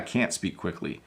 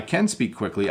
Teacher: We're at about the 27-minute mark, and listen to those two sentences. I am hitting just a little bit of a T when I say can't quickly